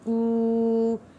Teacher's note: فأهلكوا حروف مدہ ہے اس لیے کو ہم نے 1 الف کے برابر کھینچتے ہوئے پڑھا ہے